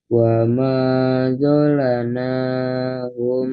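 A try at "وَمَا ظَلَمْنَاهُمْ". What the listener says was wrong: Wama dolamna ada mem sukun.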